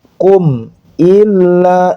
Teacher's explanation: Jadi jelas pengucapannya di bibir, mimnya itu jelas. Kum tidak ditahan, kum ila tidak, tapi kum illa, ilanya bertasydid ditahan, bukan ditahan, maaf, ditekan, kemudian panjang 2 harokat.